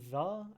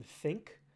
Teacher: the th in 'the' as opposed to the th in think. One is voiced and one is not.